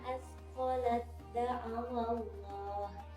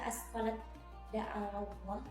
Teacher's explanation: Jadi tidak dibaca asqalat daallah, tetapi langsung dimasukkan huruf tak sukunnya ke dalam huruf dal